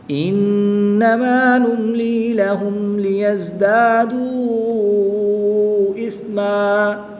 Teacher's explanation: اگر ہم وقف کریں گے تو کیسے پڑھیں گے؟ الف مدہ سے تبدیل کر دیں گے دو زبر کی تنوین کو۔